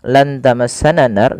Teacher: Kemudian ketika melafalkan lan tamassananaru pada lafal nunnya lan tamassananar nunnya disamarkan kepada huruf ta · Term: ikhfa